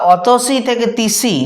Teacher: বা অতসি থেকে তিসি যখন বলছি, অস্বরধ্বনিটা লুপ্ত হয়ে গেল, শব্দের প্রথমেতে থাকা স্বরধ্বনিটা লুপ্ত হয়ে গেল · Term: আদি সল্লপ